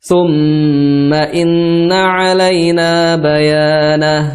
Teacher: Ya, thumma ditahan dulu ya. Ditahan pada kalimat thumma di huruf mim dan huruf nun karena dia bertasydid ya.